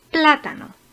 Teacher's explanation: Plátano es una palabra esdrújula, como América, ya que tiene la sílaba tónica en tercera posición.